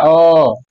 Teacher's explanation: मध्य स्वर में अ आता है, वो कहां से आता है, बीच से आता है, अ मतलब बीच में हमारा मुंह जो खुल रहा है वो बीच में खुल रहा है, अ, ठीक है।